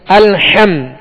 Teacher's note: وسط حلق سے ادا کریں گے، حلق کے درمیان سے ادا کریں گے